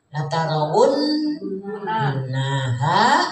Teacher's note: jadi ditekan ya, didengungkan 3 harokat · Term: guna